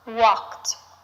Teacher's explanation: The ed verb ending sounds like a t, walked, even though it ends in the letter D.